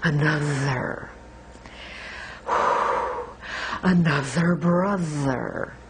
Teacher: really make that second syllable longer